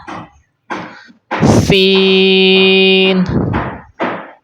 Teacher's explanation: سین کو بھی آپ نے سیٹی کے ساتھ پڑھنا ہے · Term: سیٹی والے حروف